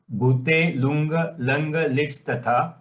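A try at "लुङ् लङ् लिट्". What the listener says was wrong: Here, you will not say ga, okay? You will not say, avoid saying nga or ga. You say nga, that's all.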